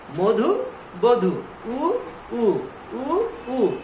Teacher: উ উ উ উ একই রকম সময় নিচ্ছে, দীর্ঘ ই দীর্ঘ উ উচ্চারণ হচ্ছে না। তাহলে দীর্ঘ ই এবং দীর্ঘ উ উচ্চারণ হয় না, এই জন্য এটি উচ্চারণে লেখা যাবে না।